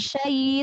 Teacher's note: turunkan bibir bawah dan rahang bawah, jangan syai, jangan imalah.